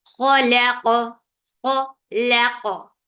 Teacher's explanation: give qalqala on qaf because there is sukoon on qaf · Kha, keep kha, e for fatha open jaws, the sound is short. Laqa, keep lam light because it is between two heavy letters. We tend to make lam heavy too, but don't do that.